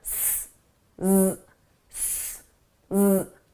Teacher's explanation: The S is at my lips, it's unvoiced. The Z is in my throat, my vocal cords are engaged, it's voiced.